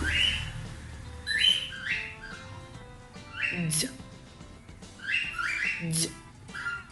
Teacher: With this sound, we can feel in our vocal cords vibration, so this sound is vibrate.